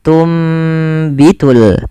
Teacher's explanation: karena ada huruf ba maka suara nunnya dirubah dan diganti dibalikkan menjadi suara huruf mim maka awalnya tunbitu dan ditanda di sini dengan mim kecil agar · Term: iqlab